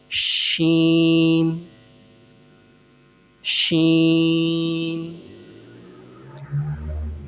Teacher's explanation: زبان کے درمیان اور اوپر کے تالو کے درمیان سے ادا ہوتا ہے